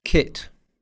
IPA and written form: kɪt (kit)